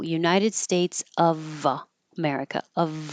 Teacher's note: it looks like an F but it sounds like a V and you will hear the V if the word after it starts with a vowel